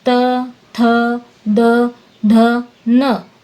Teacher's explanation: इनको बोलते समय जीभ दांतों को छूती है। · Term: त वर्ग